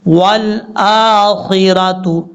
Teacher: واو کو لام سے ملائیں گے، حمزہ کے اوپر کھڑا زبر ہے، لمبا کریں گے ایک الف کی مقدار